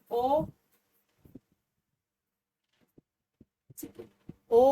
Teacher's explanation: संवृत से ज्यादा और विवृत से कम जो है वो अर्ध समृत के अंतर्गत आता है